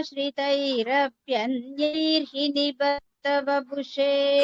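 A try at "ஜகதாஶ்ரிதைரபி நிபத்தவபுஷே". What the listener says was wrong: இன்னொரு நீ எக்ஸ்ட்ரா வருது உங்களுக்கு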